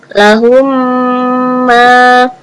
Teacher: cara membacanya masuk dan mendengung